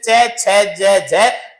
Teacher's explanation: तो स्पर्श भी करते हैं और संघर्ष करते हुए बाहर निकलते हैं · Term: स्पर्श संघर्षी